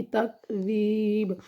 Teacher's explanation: با میں قلقلہ کرنا ہے، یہ بنے گی تکذیب